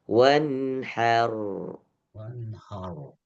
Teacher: Sama. Ini juga ha-nya tipis, rnya tebal